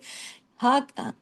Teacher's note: اس کی آواز سینے کی طرف چلی جاتی ہے، اس کا گلے کی آواز سے تعلق نہیں ہے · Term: دو چشمی ہا